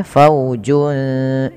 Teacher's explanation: Di sini ada bacaan ikhfa hakiki yaitu cara bacanya suara junnya samarkan ke huruf sin.